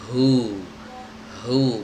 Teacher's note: Hu tadi udah kita jelaskan ya, makhrajnya ada di tenggorokan bagian bawah atau di pita suara